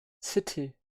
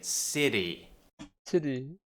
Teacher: So you have the T and then you have two vowels. Now the important thing here is that you don't pronounce it as a D, which is what Americans do. They would say city.